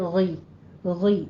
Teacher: غشاوتوں میں غین کو آپ نے پر پڑھنا ہے، غین پڑی زیر غی، غی، ٹھیک ہے۔